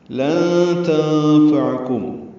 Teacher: نون ساکن کے بعد تا آنے کی وجہ سے اخفا کریں گے، لن نون کی آواز چھپائیں گے